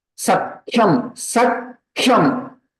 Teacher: So it will be pronounced as Mahaprana only. Ka will be added to previous, and Kha is Mahaprana, so their Ucharanam also should be Mahaprana only.